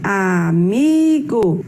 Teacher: Amigo, sua separação silábica, amigo. Sua sílaba mais forte é o mi e ela está na penúltima posição.